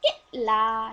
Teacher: आवाज झटके के साथ कि पे रुक रही है मगर ला पे आराम से चल रही है